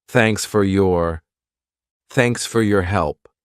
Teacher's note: At a natural pace. Native speakers, we reduce sound. So for becomes fur, thanks fur, your becomes your.